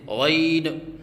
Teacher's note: آخر میں نون کے اوپر قلقلہ کرنا، جیسے غین، یہ غلط ہے